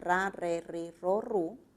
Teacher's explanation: es una vibrante múltiple